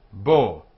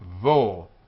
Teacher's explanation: In our pronunciation, Spanish and Portuguese, it's always b. In modern Israeli, it is vo